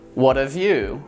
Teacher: You'll notice that I reduced have to 've.